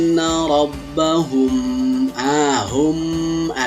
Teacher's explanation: suara terdengar suara yang disamarkan diantara bibir atau di bibir ah seperti suara dengungan tetapi ini tempat yaitu di bibir baik bukan di hidung atau di rongga hidung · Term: Ikhfa Syafawi